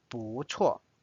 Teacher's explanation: Notice 不 it does not pronounce as 不 because the next tone is fourth tone, so it's changed from 不 to second tone